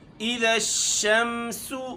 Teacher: شمسو سین کے اوپر پیش ہے اور اس میں چونکہ سیٹی والا حرف ہے ہم اس کو سیٹی دیں گے